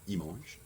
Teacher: we don't pronounce the L unless it's followed by a vowel.